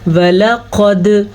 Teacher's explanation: दाल के ऊपर मैंने कलकला किया है, झटका दिया है, क्योंकि कुतुबुज्जद्दिन हरूफ़े कलकला में से है।